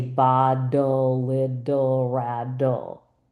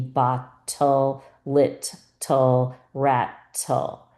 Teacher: I happen to say in my dialect, my T's as D's. So I do say bottle, little, rattle, even though it's supposed to be bottle, little, rattle, right?